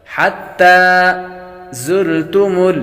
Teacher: زا کو سیٹی کے ساتھ پڑھیں گے، زا حروف صفیریہ میں سے ہے، یعنی سیٹی والے حروف میں سے ہے۔